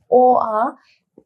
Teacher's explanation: অ আ এই দুইটা উচ্চারণ হয় আমাদের কণ্ঠ থেকে, তার জন্য এটাকে বলা হয় কণ্ঠধ্বনি।